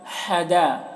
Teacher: हा की आवाज़ हलक से, दाल को ज़्यादा खींचेंगे, मद है।